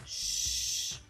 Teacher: voiceless because there is not a vibration in our vocal cords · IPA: /ʃ/